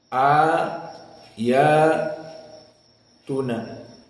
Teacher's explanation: ayatuna di sini hanya dibaca Dua harakat saja